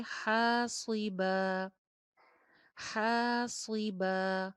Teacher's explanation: علیکم حاصبا, ہا کے ساتھ الف مدہ اور لاسٹ میں با کے ساتھ بھی الف مدہ, دونوں ایک جتنا لمبا رہیں گے